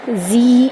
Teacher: زی یا مدہ ہے، اس کو ایک الف کے برابر لمبا کریں گے۔